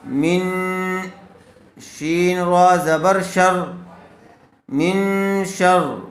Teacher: نون ساکن کے بعد حروف اخفا میں سے شین آیا ہوا ہے اس لیے غنّے کے ساتھ اخفا کر کے پڑھیں گے